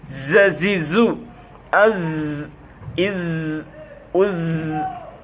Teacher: জিহ্বার আগাটা নিচের দাঁতের সামনে নিচের দুই দাঁতের সাথে থাকতেছে এবং কম্পনের সহিত শীষের সহিত